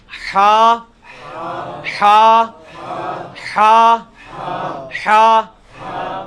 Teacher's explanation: ہا کا مخرج جو ہے نا یعنی وسط حلق